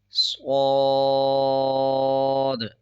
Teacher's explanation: جیسے آپ کو پہلے بتایا کہ صاد موٹے حروف میں سے ہے. صاد کو موٹا بھی پڑھنا ہے اور صاد کے اوپر مد ہے بڑا، 5 سیکنڈ کھینچ کے پڑھیں گے